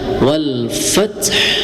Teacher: Jadi huruf ha tetap dibaca tetapi disukunkan